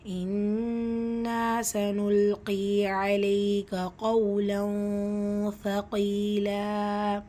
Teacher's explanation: இன்னா நூன் முஷத்தா குன்னா செஞ்சு ஓதணும். கூடவே அலிஃப் மத்தா இருக்குது, 2 ஹரக்கத்தளவு நீட்டம் கொடுக்கணும்.